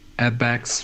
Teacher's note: Good stress on add-backs, the add being stressed more than the backs.